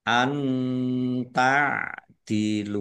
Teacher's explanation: Nun sukun bertemu dengan huruf ta, bacaan ikhfa, dibaca samar-samar.